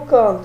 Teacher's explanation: esse A é um A nasalizado